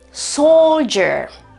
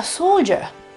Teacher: nella versione britannica, soldier, non c'è nessun tipo di R.